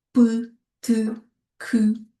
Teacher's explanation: par l'absence des cordes vocales, nous avons des consonnes sourdes